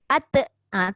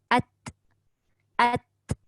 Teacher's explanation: Sebab suara lepas, hamas, nafas pun lepas. Sedangkan ta itu, nafas sahaja yang terlepas, suara tidak. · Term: sifat hamas